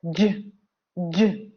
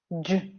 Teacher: So you make the G sound by releasing the air, J, J, and voicing the sound, J. It is similar to the way the D sound is made, D, J, D, J. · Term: the voice sound J